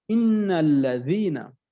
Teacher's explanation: নুনটাও আমার 2 বার উচ্চারণ হলো, লামটাও 2 বার উচ্চারণ হলো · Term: তাজদীদ